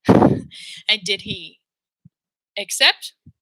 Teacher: we're going up did he accept because it's a question that she wants the answer to it's not rhetorical she needs an answer did he accept now